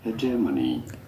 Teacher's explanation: You do want to stress on the second syllable, the J syllable.